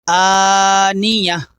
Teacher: یہ والی تا وقف کرنے کے بعد ہا بن جاتی ہے، تو آخر میں آنیت آواز نہیں آئے گی بلکہ آواز آئے گی آنیہ